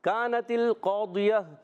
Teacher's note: تا کو لام سے ملانا ہے، لام کو ہلانا نہیں ہے · یہاں پر کاف الف زبر کا، کاف یہاں باریک ہے، زبان کی جڑ اور تالو کے سخت حصے سے ادا ہوتا ہے. کاف الف زبر کا، الف مدہ کھینچنا بھی ہے.